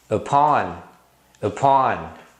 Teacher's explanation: O on é a sílaba forte, a sílaba tônica. Então o U é schwa.